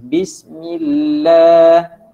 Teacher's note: Bismillah, huruf sebelumnya berbaris bawah, maka lafaz Allah itu kamu kena baca dengan nipis.